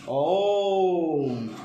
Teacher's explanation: दीर्घ माने 2 मात्रा का समय, आ थोड़ा टाइम टेकिंग है। प्लुत ओम अर्थात 3 मात्रा का समय, थोड़ा लंबा समय लिया गया